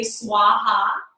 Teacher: the V and the W are sort of similar they're halfway between the two in some script so it's all one sound ha ha I